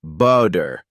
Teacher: the T sound in the middle of a word sounds more like a quick D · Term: flap T